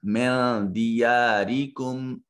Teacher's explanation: نون ساکن کے بعد دال حرف اخفا ہے، اس کو اپنے مخرج میں چھپا کر ادا کریں گے۔